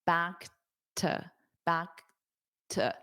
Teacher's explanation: So you do hear a little bit of this click for the K, back to, back to, back to. But this to is pronounced as a t because it's an unstressed preposition